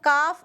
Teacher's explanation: जबान की जड़ ऊपर के तालू के सख्त हिस्से पर लगाकर काफ अदा करेंगे